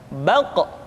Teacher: Diucapkan dengan suara yang tebal dan dalam posisi sukun, maka terdengar pantulan suara.